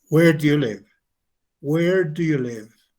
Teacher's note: Cuando tenemos preguntas que son information questions, a las que necesariamente tenemos que dar información, entonces la entonación cae.